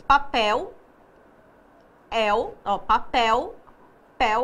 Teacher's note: a última sílaba é a mais forte, então ela é uma oxítona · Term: oxítonas